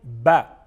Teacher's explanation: دونوں ہونٹوں کے تر حصہ سے ادا ہوتا ہے